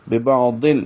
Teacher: ببعضل، اور یہ ادغام ہے غننے کے بغیر، بغیر غننے کے، ادغام بلا غنہ، ببعضل یعنی ضاد لام سے مکمل طور پر مل جاتا ہے